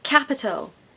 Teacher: we are stressing that first syllable